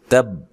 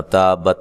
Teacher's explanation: تا کو با سے ملانا ہے سختی سے، ٹھیک ہے. تب ٹھیک ہے، نرم نہیں کرنا، تابت نہیں کرنا.